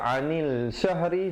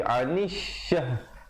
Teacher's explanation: Alif lam syamsiah. Jadi lamnya jangan dibunyikan.